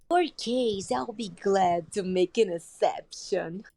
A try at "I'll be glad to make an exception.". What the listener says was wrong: Okay, and also on exception, I'm not hearing a k. I'm hearing exception instead of exception.